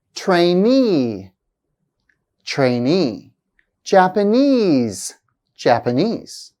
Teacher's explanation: productivity productivity strategy strategy capital words ending in e and E's have the primary stress actually placed on the suffix